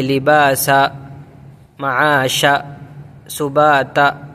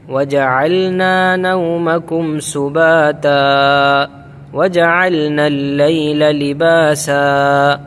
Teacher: اچھا، بہت سے غلطیاں کرتے ہیں، ان کے جو آخر میں ہے نا الف آیا ہوا ہے، یعنی دو زبر والی تنوین ہے، دو زبر پر وقف کرنا ہو تو ایک زبر کے ساتھ الف پڑھا جاتا ہے، ایک زبر کے ساتھ الف پڑھتے ہیں اور الف کو کھینچا جاتا ہے